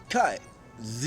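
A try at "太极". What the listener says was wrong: Yeah, the first one with the T.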